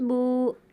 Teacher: جیسے با واو پیش بو، زیادہ نہیں کھینچتے، ایک الف کے برابر کھینچ کر پڑھتے ہیں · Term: واو مدہ